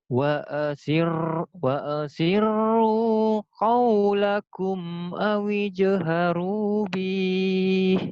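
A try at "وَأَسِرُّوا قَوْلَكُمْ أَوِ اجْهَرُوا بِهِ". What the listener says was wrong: pendek. Awijharu bih gitu ya, pendek. Pendek. Pendek. Wa asirru qawlakum awijharu bih. Bih gitu ya. Tapi itu mah latihannya disentak. Tapi kalau ini nggak usah begitu. Awi jaharu bih biasa aja ya.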